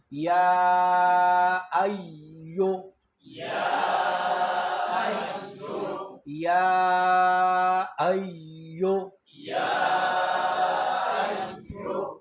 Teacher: ایون کې حمزه قطعی ده او اقصای حلق ته اورسوي، د تحقیق صفتو کې سخت وای.